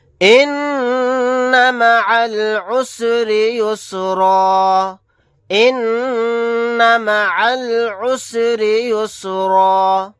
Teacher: ان مع العسر یسرا ان مع العسر یسرا، نون کے اوپر تشدید ہے، یہاں پر غنہ کریں گے، عین کو ڈائریکٹ لام ساکن کے ساتھ ملائیں گے، الف نہیں پڑھا جائے گا۔ را کے نیچے زیر ہے، را کو باریک پڑھیں گے۔